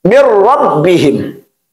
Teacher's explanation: Ada huruf nun sukun, min, kemudian masukkan kepada huruf ra, mir rabbihim, tanpa gunnah. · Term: idgham bila gunnah